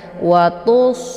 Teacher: Watus, ini shad ya, jadi shad ini bacaannya tebal ya, dan dia adalah sifatnya shafir, jadi anginnya itu lebih jelas ya. Watus ya, ditebalkan, kemudian anginnya itu dibunyikan secara jelas.